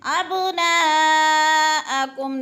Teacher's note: با حروف قلقلہ میں سے ہے، ہلا کے پڑھنا ہے، ابناءکم، نا پہ مد متصل، چار حرکات کے برابر نا کو کھینچ کر پڑھنا ہے